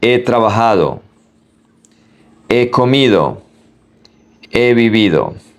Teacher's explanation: We pronounce both verbs together. We do not make a pause between the verbs.